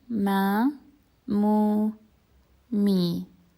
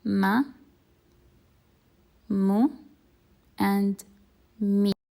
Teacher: pronounced through closing the two lips together and letting the air or the sound come out through the nasal cavity. And it's very similar to the m sound in English. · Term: meme